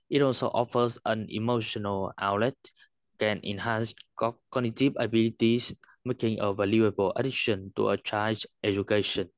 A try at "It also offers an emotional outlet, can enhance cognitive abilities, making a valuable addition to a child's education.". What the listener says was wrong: Much better, nhưng mà có thể cải thiện cho hay hơn.